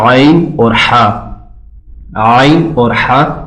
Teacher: जैसे आइन और हा, आइन और हा ये सेम वहां से अदा हो रहे हैं। वस्ते हलक यानी गले का जो दरमियानी हिस्सा है ये वहां से अदा होंगे। हमारा जो थ्रोट है, थ्रोट का जो सेंटर वाला हिस्सा है, ये सेंटर वाले हिस्से से दोनों अदा होते हैं।